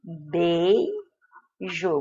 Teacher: você tem vogal E, semivogal I, o que te dá um ditongo decrescente